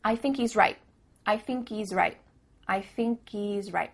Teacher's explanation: at the end of the word right, there's no T sound